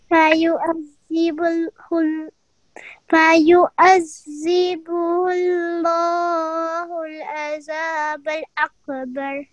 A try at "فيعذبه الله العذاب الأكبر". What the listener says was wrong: Okay, but not kalkala, only kalkala for qaf with the sukoon, not kaf with the sukoon. عذاب الأكبر